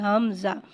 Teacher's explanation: حمزہ کو بغیر کھینچے پڑھیں گے اور حمزہ میں ہاں کی آواز کو بھاری ادا کر کے پڑھیں گے